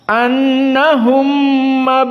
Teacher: idgham mim Sakinah kepada mim yang fathah